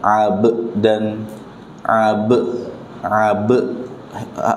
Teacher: Ba sukun dibaca dengan qalqala sughra ya.